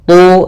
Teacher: Kemudian nujumu ada mad thabi'i yaitu domah bertemu wau. Tu tebalkan huruf tha karena dia huruf istla